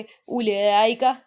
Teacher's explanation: اب کھڑا زبر کے بعد حمزہ اسی کلمے میں آ رہی ہے تو اس کو کیسے پڑھیں گے؟ مد متصل کے قائم مقام پڑھیں گے، مد متصل کی طرح پڑھیں گے، یہاں پہ مد متصل ہو رہی ہے، ٹھیک ہے۔